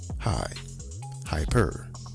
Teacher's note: The prefix hyper as in hyperlink or the adjective hyper puts an emphasis on the first syllable.